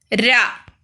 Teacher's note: நாவின் நுனி மேல் அன்னத்தில் முதல் பகுதியை தொட்டு வருவதால் ரகரம் தோன்றுகிறது. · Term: இடையின ரகரம்